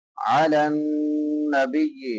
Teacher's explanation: درمیان میں سے وسط حلق سے، علی النبی نون مشدد ہے، نون مشدد پہ غنہ کریں گے، ایک الف کے برابر آواز کو ناک میں چھپا کے ادا کریں گے